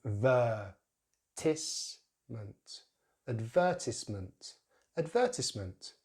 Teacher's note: So we put the stress on the second syllable, the, which contains that long vowel sound, which is very similar to the schwa sound, tongue in the center of the mouth, but this time the jaw drops a lot more, So the first syllable is a reduced syllable, schwa and then a D